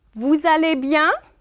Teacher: Vous allez bien, si vous ends with a S, and then aller starts with a vowel A. So we will link this S and this A as if vous allez was just one word.